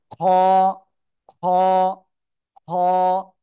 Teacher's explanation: আমরা বাংলায় পড়ি এই যে অক্ষরটা না, এরকম উচ্চারণ, খ। গলার শেষ ভাগ থেকে উচ্চারণ করতে হবে,